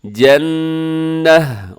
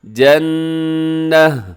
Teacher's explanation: اصحاب الجنتی، جنتی میں کیا ہے کہ نون آپ نے مشدد کی وجہ سے غنہ کیجیے گا، اور جنتی آخر میں گول تا، وقف میں اس کو ہم ہا کے ساتھ بدل دیں گے